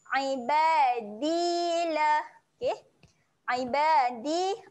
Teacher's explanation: sentuh hujung lidah pergi belakang gigi atas sebab huruf Dal makhraj dia dekat situ okey dia bukan hujung lidah naik langit Eh kalau hujung lidah